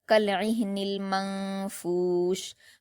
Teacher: میم پر حرکت جلد پڑھیں گے، نون پر جزم ہے یعنی نون ساکن ہے تو میم کو نون سے ملا کر پڑھا جائے گا، لیکن نون ساکن کے بعد فا آیا ہے جو کہ حروف اخفا میں سے ہے اس لیے یہاں پر نون ساکن کی آواز کو ناک میں چھپا کر غنہ کے ساتھ پڑھا جائے گا، یعنی اخفا کا قاعدہ ہوگا، کَالْعِهْنِ الْمَنفُوشِ۔